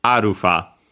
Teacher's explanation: As for the accent, it's simply on the first mora beat in Japanese. We could say also syllable, but and so on the a, arufa, high, and everything else low.